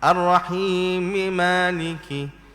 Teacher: Kalau kita wasal, Ar-Rahmanir Rahim maka Ar-Rahim di situ dia jadi hukum mad asli saja. Ar-Rahim. Jadi 2 harakat sajalah panjang.